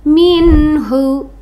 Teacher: Nun mati bertemu dengan huruf ha itu izhar halqi, dibaca jelas.